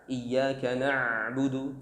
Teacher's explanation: Huruf ain ini keluar dari tengah tenggorokan.